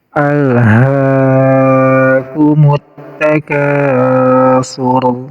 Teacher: alif lam syamsiyah itu tidak dibaca alif lamnya. Jadi dari mim di sini langsung ke huruf ta. Alif lamnya anggap tidak ada.